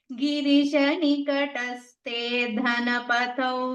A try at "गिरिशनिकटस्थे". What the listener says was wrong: Again, Nikataste tha Mahaprana.